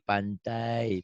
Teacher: Diftong itu huruf lin ya. Kayak a dan i jadi ai.